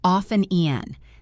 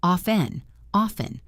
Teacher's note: For often, remember the T is on holiday.